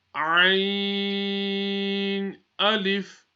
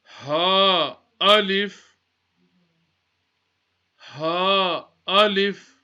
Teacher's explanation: Ayn and the last letter we read, the ha, are both pronounced from the middle of the throat